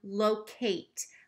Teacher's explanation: I'm hearing that eight at the end, so it's not the schwa sound. Low, Kate, k-a-t, locate.